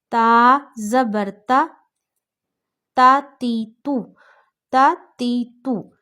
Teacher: اب ایسے نہیں پڑھ سکتے تا تی تو، کھینچنا نہیں ہے